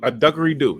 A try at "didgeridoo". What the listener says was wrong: a didgeridoo, not duggeridoo. Didgeridoo.